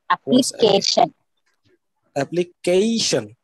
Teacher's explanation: eleven as it is mentioned over here with the phonetic transcription accent on the third syllable